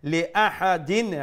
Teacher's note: after the tanween is letter ain is from the throat letter so we'll pronounce the tanween with clarity with izhar